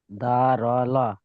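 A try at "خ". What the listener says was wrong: হ্যাঁ বাবা, ঠিক পড়েননি, ভুল বলেছেন। হরফগুলো আগে ঠিকঠাক দেখেন, হরফ ভুল করেছেন। আর জিমের কোথায় নকটা থাকে না, কোথায় নকটা থাকে? জিমের কোথায় নকটা থাকে ভাই? জিমের নিচে, তাই এখানে তো ওপরে আছে, তাহলে আপনি জিম কেন বলছেন? হ্যাঁ, তা খ একবারে বলেছেন কি আপনি?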